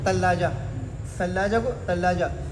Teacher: تو سا کو بالکل تا پڑھتے ہیں. ثلاجہ کو تلاجہ بولتے ہیں.